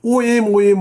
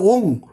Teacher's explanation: উচ্চারণটা ও এম নয় ও এনজি